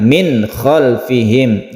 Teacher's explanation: Izhar halqi ini tidak dengung dan harus jelas dan terang suara dari nun matinya